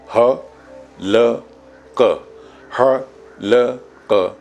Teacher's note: جیسے ہمیں کہنا ہے حلق، تو ح، ل اور ق. ح آپ نے حلق سے بولا، لام میں زبان اوپر جا کے چھوئی